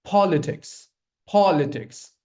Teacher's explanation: So when I say this aspirated sound, the P, the C, and the T sound, you'll feel that gush of air coming out of your mouth. · Put stress on the first syllable.